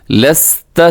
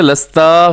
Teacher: لست لست، لام زبر سین، لست زبر تا، لست سین باریک ہوتا ہے، سیٹی بھی ہے اس میں، تا کو لمبا نہ کیجیے گا، لستا غلط ہے